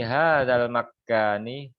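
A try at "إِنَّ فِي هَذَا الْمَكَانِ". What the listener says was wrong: Enggak usah ada tasdid. Makani langsung gitu. Fi hadzal makani.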